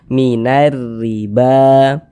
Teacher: Maka huruf ro-nya itu dibaca tarkik, baca tipis-tipiskan huruf ro-nya. Jadi pangkalisan kita nggak usah naik terangkat ke atas, tipiskan.